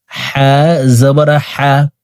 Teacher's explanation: হা জবর হা জবর হাফের উচ্চারণ হলকের মধ্যখান থেকে পড়বো কারণ হার মাখরাজ হলকের মধ্যখান থেকে হবে